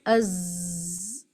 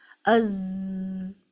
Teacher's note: ٹپ ٹنگ جو ہے زبان کی نوک وہ باٹم ٹیتھ سے ٹچ ہو کر کچھ اوپر والے اپر ٹیتھ سے بھی ٹچ ہوتی ہے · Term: حرف زا